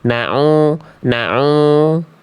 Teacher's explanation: suara masuk ke dalam rongga hidung masih sengau ainnya.